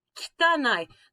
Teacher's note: That E sound, the kitanai, that's what we call a voiceless vowel.